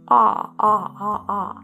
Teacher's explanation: my tongue and my mouth and my jaw, everything is open and my jaw is very low and open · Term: very open